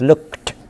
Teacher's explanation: it should be pronounced as t, because the previous sound k is a voiceless plosive